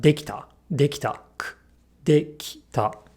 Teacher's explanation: But in its past form, this R becomes a T, and this I gets devoiced because T, t, t is an unvoiced consonant.